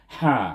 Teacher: sifat infitah ada juga padanya, iaitu antara lidah dengan langit-langit terbuka. Apabila menyebut ha gitu. · sifatnya hamas, iaitu napas kita terlepas bila menyebut ha. Iaitu dia berangin, maksudnya hamas.